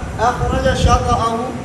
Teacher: جیم کا شین میں صرف اس کلمے میں ادغام ہے